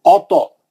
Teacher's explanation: توئے پہ خلخلہ کریں گے کیونکہ توئے مستعلیہ کا ہے, موٹا پڑیں گے